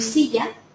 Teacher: en silla, la primera sílaba, SI, sería acentuada